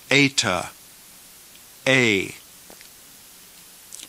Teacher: is pronounced as a long a as in the word eight even though this is a long e in Greek pronounce it like a long English a